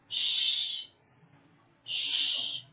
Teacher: Now, place your hand in your voice box and say sh. There is no vibration, and that means this sound is an example of voiceless consonant.